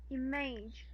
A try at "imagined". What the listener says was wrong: Imagined. Image is if this is the word. That is how you pronounce image. But this is imagine.